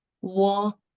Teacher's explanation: wo here is without any tones, or we can say it's the even tones. So it should be pronounced as wa, but in the number word number 3, there is a Q, which is symbolizing the falling tone.